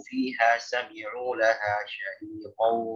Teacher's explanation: Fiha fa-nya panjang, ha-nya panjang. Sami'u yang panjang hanya ain yang ada huruf mat.